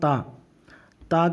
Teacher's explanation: ता का मखर है जबान की नोक और सना उलिया की जड़